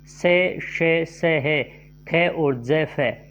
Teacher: उच्चारण अवयव इतनी निकटता पर आ जाते हैं कि बीच का मार्ग छोटा हो जाता है तब वायु उनसे घर्षण करती हुई निकलती है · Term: संघर्षी व्यंजन